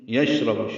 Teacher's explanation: شین ساکن پہ ہمس تفشی